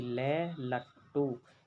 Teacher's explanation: जब हम ले का उच्चारण करते हैं तो वायु हमारी जो जीभ है, जीभ के साइड से निकलती है, इसलिए हम ले लट्टू यानी कि ले को पार्श्विक व्यंजन कहते हैं।